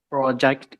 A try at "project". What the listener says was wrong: Project, not project. Project. Okay, it's not going to be read as O. It's going to be read as a schwa. Project.